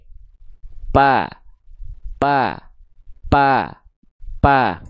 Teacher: Dia yang nempelnya adalah bibir bibir atas dan bibir bibir bawah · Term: huruf P